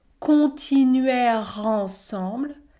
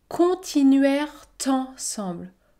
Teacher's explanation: Soit vous effectuez l'enchaînement, continuèrent ensemble, ou alors vous pouvez également effectuer la liaison.